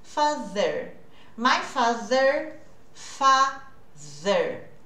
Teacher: Esse TH vozeado, com voz, porque as cordas vocais vibram. Independente do TH que nós vamos fazer, o movimento você vai perceber que a língua precisa estar lá entre os dentes.